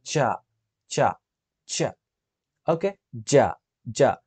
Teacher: ఇది ఎలా పలుకుతాం అంటే ఇక్కడ ఆ సెంట్రల్ ఆ ఉంది కదా ప్యాలెట్ ప్యాలెటల్ ఉంది కదా అంటే మన పై దవడ ఉంది కదా అక్కడే పలుకుతాం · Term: అఫ్రికేటివ్స్